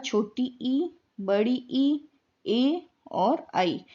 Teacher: अग्र स्वर, जब जीभ का अग्र भाग सक्रिय होता है, आगे का भाग